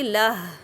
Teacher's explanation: میں نے اس کو ساکن کر دیا۔ اب اس کو میں 2 کاؤنٹ نہیں کھینچ رہی